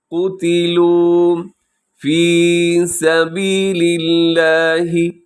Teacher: یہاں لفظ اللہ ہے اسے آپ باریک رکھیے گا کیونکہ اس سے پہلے لام کے نیچے زیر ہے